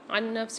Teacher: نون ساکن کے بعد دوسری نون مشدد آ رہی ہے، تو یہاں پر ہم ادغام مال غنہ والا قاعدہ کریں گے، یعنی یہاں پر ہم غنے کے ساتھ ادغام کر کے پڑھیں گے